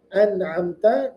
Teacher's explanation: nun bertemu dengan ain, ini dibaca jelas atau izhar, bukan dibaca samar atau dengung.